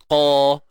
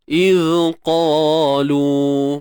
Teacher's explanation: Angkat pangkal lidah kita. Itulah sifat isti'la. Okey, terangkatnya pangkal lidah.